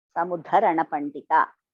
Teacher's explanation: First da is Alpaprana, the second one is Mahaprana.